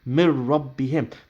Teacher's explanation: you'll drop the noon sakin, but you will pronounce the ra or the lam without gunna. So it will be mir rabbihim.